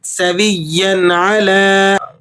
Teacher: سویا اعلیٰ کی تنوین پر بھی آپ غنہ ادا نہیں کریں گے